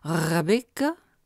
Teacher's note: anglais le cas du R est particulièrement intéressant cette graphie simple se prononce en effet grassillé en portugais en début de mot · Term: grasseyé